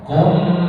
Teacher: maka bacaannya wajib berdengung tahan tiga harakat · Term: Idgham mimi